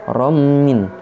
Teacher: Kemudian romin merupakan idgham bigunah karena fathah tanwin bertemu dengan mim. Harokat fathah tanwin dileburkan dan seolah-olah mim bertasydid, membacanya disertai dengung.